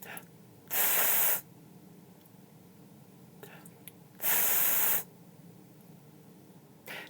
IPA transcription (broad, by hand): θ